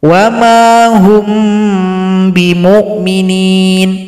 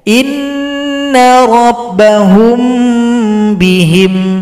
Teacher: Kalau mim sukun berjumpa ba itu namanya ikhfa syafawi.